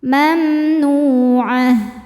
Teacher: Tak marbutoh jadi ha sukun dan ainnya pendek.